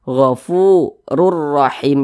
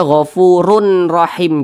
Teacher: Cara membacanya itu dengan cara memasukkan kemudian tidak digunnahkan, tidak didengungkan. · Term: bila gunnah